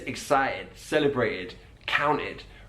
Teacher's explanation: you will also notice that he drops the t's